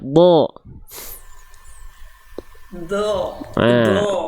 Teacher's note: Mulutnya nggak sama sekali monyong ya. Do, nggak membentuk vokal O juga. Do, nggak. Do. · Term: huruf dot